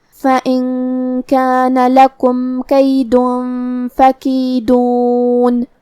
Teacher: ہم یہاں نون کو چھپاتے ہوئے اور غنہ کے ساتھ یہ حکم کو ادا کریں گے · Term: اخفاء